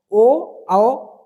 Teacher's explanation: ओ और औ ये दोनों के दोनों आपके कंठ और होठ ओष्ठ दोनों के सहायता से बोले जाते हैं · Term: कंठोष्ठ वर्ण